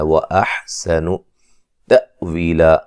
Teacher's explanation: اور نون تنوین کا یہاں ادغام مع الغنہ ہے، وَأَحْسَنُ تَأْوِيلًا حمزہ کو جھٹکے سے ادا کریں گے ، وی ہے مدہ ہے، لا یہاں الف مدہ میں تبدیل